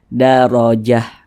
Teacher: kalau huruf tamarbutah ini apabila dia sukun atau mati menjadi huruf H maka dibaca daroah